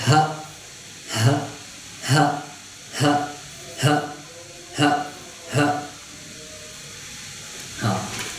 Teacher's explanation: इसका मखरज है हलक का वो हिस्सा जो सीने की तरफ है · تو اس ہا کو جب ہم پڑھیں گے تو اس وقت پڑھیں گے اس کا سب سے پہلے اس کا مخرج ہم معلوم جانتے ہیں کہ اس کا مخرج ہے حلق کا وہ حصہ جو سینے کی طرف ہے